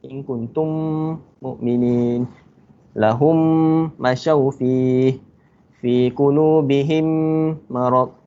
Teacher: menggabungkan huruf mim yang pertama, mim mati yang pertama ke dalam huruf mim yang kedua berbaris dengan dengung kadar 2 harakat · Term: idgham syafawi